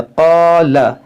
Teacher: क़ाफ हुरूफ़ मुश्तालिया है, अलिफ मद्दा है